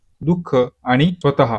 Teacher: स्वतः म्हणताना शेवटी ह चा उच्चार होतो, त्यालाच आपण काय म्हणतो विसर्ग, जो अक्षराच्या शेवटी असे दोन टिंब देऊन आपण लिहितो. · विसर्ग असलेली स्वरादी म्हणजे शब्दाच्या शेवटी हलका ह, र असा आवाज येतो